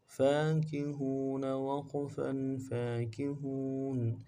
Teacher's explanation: शुगुलिन फी शुगुलिन फाकिहून, फाकिहून, फा के ऊपर खड़ा ज़बर है, एक अलिफ दाल में खींचेंगे, काफ को नून से पढ़ेंगे, हा को वाव के साथ मिलाना है, वाव मद्दा है, एक अलिफ दाल में खींचेंगे, नून को नून से अदा करेंगे, वक़्फ़ की सूरत में नून को साकिन करेंगे